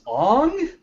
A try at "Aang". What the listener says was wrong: Aang. Aang. Long A.